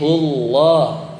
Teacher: Di lidah kita ya. Pangkal lidah kita tuh naik, belembung gitu dia ke belakang. Jadi hullah, ya, itu terdengar tebal.